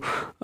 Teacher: और ये जो ह होता है ये सघोष होता है